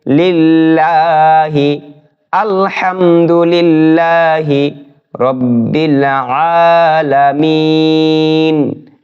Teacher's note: চিকন হবে বিসমিল্লাহি আলহামদু আলহামদুলিল্লাহি এখানে আল্লাহ শব্দের ডানে জের হয়েছে আল্লাহ শব্দের ডানে জের থাকিলে আল্লাহ শব্দকে বারিক করে চিকন করে পড়তে হবে